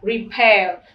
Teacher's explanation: vì trọng âm rơi vào âm tiết thứ hai, cho nên ở đây nó lượng thành re và pair nó là air.